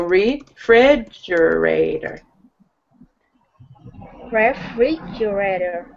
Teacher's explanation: the emphasis is on syllable 2